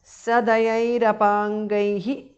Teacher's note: Sadayaihi is a compound word. Visarga changes to Repha. Apangaihi. Sadayairapangaihi because of Sandhi.